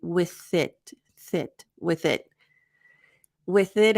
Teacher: So we have the th. We have the unvoiced th